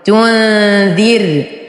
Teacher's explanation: راء ساكنة وقبلها مكسور فالراء مرققة